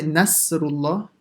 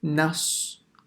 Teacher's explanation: So na, empty mouth, sad, full mouth.